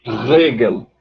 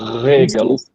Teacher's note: Com a úvula, o pinguelinho lá atrás. É quem vibra. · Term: uvular